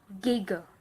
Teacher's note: The next consonant is G. The tongue dorsum is elevated and retracted to contact the back of the hard palate and the soft palate, depending on the phonetic context. Air pressure buildup behind obstruction is released by lowering the tongue, producing noise burst. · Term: G consonant